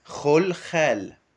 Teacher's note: Le KH qui est le R raclé au fond de la gorge